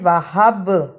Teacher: با پہ جزم کی صورت میں قلقلہ بھی کرنا ہے